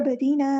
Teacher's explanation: ऐन को मुस्तहलक यानी middle throat से अदा करना है, बा पे कलकला हो रहा है , अब्दीना नहीं पढ़ना है, अब इस तरह हिलाना है, अब्दीना,